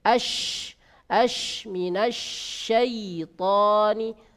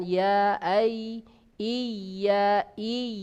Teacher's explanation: kalau shin tadi ada tafasyi, kalau ya tidak ada tafasyi, ya, dan ya mudah sekali diucapkan, ya ai iyyaka.